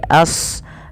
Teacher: Shadnya tebalkan dikit, jangan dibaca ashabi tapi as tebal ya.